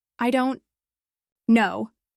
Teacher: Say it slowly with a falling tone. I don't know. That feels final, like there's no doubt about your lack of knowledge.